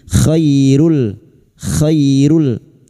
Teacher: khi fathah bertemu ya sukun kita lunakkan huruf lin